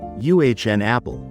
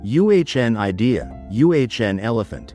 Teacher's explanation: We tend to give every letter its full sound, but English often reduces these small words. Think of it as UHN, as in fun, but with a very short U sound.